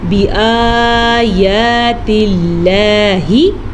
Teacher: لفظ اللہ کو ہم نے باریک پڑھنا ہے، لفظ اللہ سے پیچھے زیر کی وجہ سے